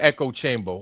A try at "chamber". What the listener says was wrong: Chamber? You mean chamber? You were doing so good in pronouncing your ERs at the end of words.